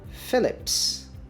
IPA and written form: fɪlɪps (Philipp's)